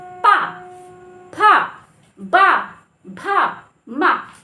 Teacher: जब आप पा बोलते हैं तो दोनों ओष्ठ आपस में मिलते हैं। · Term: ओष्ठ ध्वनियां